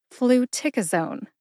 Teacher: Emphasize tic. See if you can hear tic emphasized when I say it again